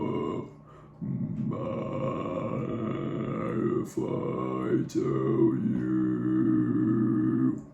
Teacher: what you're hearing is what's known as subharmonics, which means that there's like a lower tone overlaying the higher one